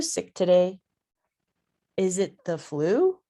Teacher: so you can go up um with a clarification question